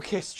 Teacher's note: that s in kiss is unvoiced so that ed is a t sound